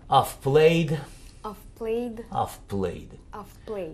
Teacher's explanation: То есть, когда только прибавляется вторая часть глагола, это просто вторая часть глагола, так have здесь превращается в приставку. И получается, что она вообще безударная.